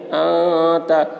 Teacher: انت، نون ساکن کے بعد حروف اخفا میں سے تا آ رہا ہے، اس لیے نون کی آواز کو ناک میں چھپا کر پڑھیں گے، اس کو اخفا کہتے ہیں.